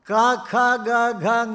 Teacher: ಆಯಿತು ಆಮೇಲೆ ಬರುವಂತದ್ದು ಶಬ್ದ ಕರ ಕ ಖ ಗ ಘ ಞ ಅಂತ ಈ ಐದು ಅಕ್ಷರ ಹೇಳಬೇಕಾದರೆ ಕಂಠವು ಬೇಕು